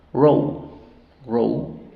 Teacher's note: dividimos así silaba abierta la primera suena ou